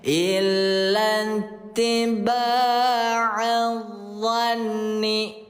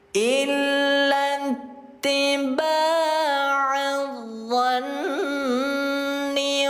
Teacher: Gunnah nun bertasdid dibaca dengung 2 harokat.